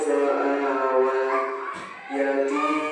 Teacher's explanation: huruf ti dibaca panjang satu alif atau dua harakat